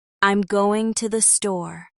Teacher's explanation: I'm going to the store starts a little higher and ends a little lower. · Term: falling intonation